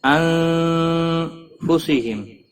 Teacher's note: نون ساکن کے بعد حروف اخفا کا فا آیا ہے، اخفا حقیقی ہوگا، گنہ کے ساتھ پڑھیں گے